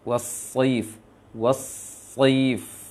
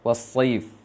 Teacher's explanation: Angkat lisannya. Seakan-akan membaca sin namun tebal. Was-saif. Anda upamakan baca seakan-akan baca sin kita baca sin tasydid.